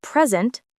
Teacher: in present, noun, the stress is on the first syllable. In present, verb, it's on the second. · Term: stressed syllables